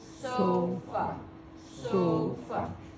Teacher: that's stress i'm saying it louder i'm saying it longer